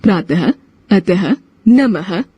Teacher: अह को विसर्ग कहते हैं। इसका उच्चारण ह के समान अथवा स्वर के बाद झटका देकर किया जाता है। अह का चिन्ह होता है, जैसे प्रातः, अतः, नमः आदि।